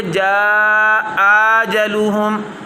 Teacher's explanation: طول نہیں کرنا چونکہ مد اصلی بن رہی ہے، بعد میں ساکن تو آیا نہیں